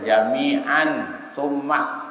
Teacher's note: Nunnya tidak boleh jelas, nggak boleh dibaca jami'an summa. Kalau jami'an summa idhar namanya. Nunnya jelas. Dia dibaca samar.